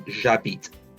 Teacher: it's not two separate sounds just j roll it all through together and then jabit it's almost like the h isn't there like